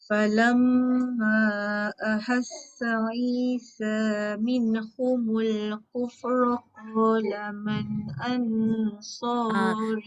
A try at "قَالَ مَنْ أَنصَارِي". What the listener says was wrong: Man dah betul. Au tu tebal sikit.